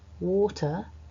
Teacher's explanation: When we pronounce this word individually on its own, so not in a sentence, water, actually as a British English speaker, I'm not pronouncing the R